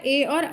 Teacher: ए और ऐ का उच्चारण होता है कंठ प्लस तालु से